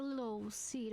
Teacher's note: we mostly actually just make the o sound rather than the L Sound